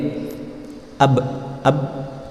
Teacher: Atau ketika dia berhenti, ab, belakangnya ada pantul ab, tidak bisa berhenti hanya dengan ab misalkan, karena dia punya sifat qalqalah